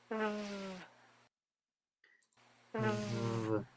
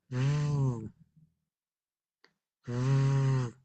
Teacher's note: Se hace con los dientes también. Es una consonante dental.